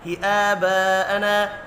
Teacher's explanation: علی، یہ بھی یالین ہے۔ ہی آباءنا، کھڑی زبر کو اور الف مدہ کو ایک ایک الف کے برابر کھینچ کر پڑھنا ہے۔